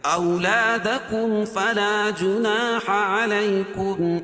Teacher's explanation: اولادکم، غنہ نہیں کریں گے، اس میں اظہار کریں گے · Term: اظہار شفوی